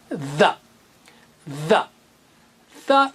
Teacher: जबान की नोक थोड़ी सी बाहर निकालना है और जोर से हवा के साथ कहना है